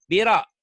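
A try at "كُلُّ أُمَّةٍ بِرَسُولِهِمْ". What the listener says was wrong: Rohnya pendek. Sunya panjang. Itu kan unya banyak tuh. Birasulihim banyak unya.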